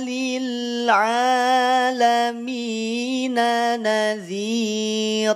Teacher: tidak dibaca tanwin ya tanwinnya hilang jadinya dibaca naziro tidak naziron